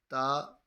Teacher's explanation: تا زبان کی نوک اوپر کے دانتوں کی جڑ سے ادا ہوتا ہے